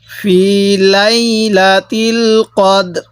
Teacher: রটা হালকা করে উচ্চারণ করব দালটা পুরোপুরি উচ্চারণ করব